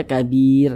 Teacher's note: Maka huruf ra sukunnya itu karena huruf ra sukun sebelumnya ada harokat kasrah, maka huruf ra sukunnya dibaca tipis, dibaca tarkik, sehingga dibaca kabir.